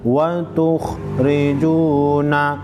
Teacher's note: खा को मोटा पढ़ेंगे, रा को बारीक पढ़ेंगे ज़ेर की वजह से। वाव मद्दा को एक अलिफ के मिकदार खींचेंगे।